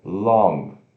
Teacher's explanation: se pronuncia L o n que trava no céu da boca